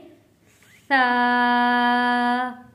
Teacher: सा को पढ़ते हुए हमारी जबान का किनारा हमारे दोनों दांतों के दरमियान में आता है और साथ में हवा भी जारी रहती है। मुंह से गर्म हवा जैसे महसूस होती है।